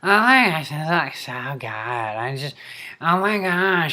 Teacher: sound like a tiny little baby tyke, valley girl, weird, breathy